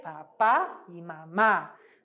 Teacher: não vai ser papá e mama vai ser papá e mamar sempre o a aberto